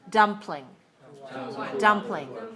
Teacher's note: two syllables stress the first